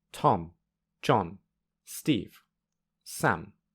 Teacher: for the first two phrases there are short gaps between the strong Beats